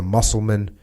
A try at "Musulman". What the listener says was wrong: Not muscles. Musulman.